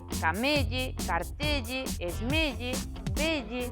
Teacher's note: Tamén son sempre con E pechado os topónimos acabados en elle.